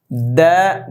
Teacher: দাল হরফটা জিব্বার আগা দাঁতের গোড়া, ইত্তায়ের মখরাজে।